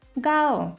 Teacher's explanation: the first tone is high and flat